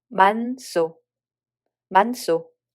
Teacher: hieut makes the following [ㅅ] sound tensed and loses its own sound value